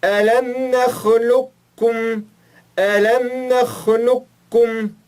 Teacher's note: Este caso também aplicamos o idgham incompleto, como fizemos na regra anterior, que mostramos nos slides anteriores, sobre o tó e o té. Então, fica um pouco ainda do som do qaf, só que falamos o kaf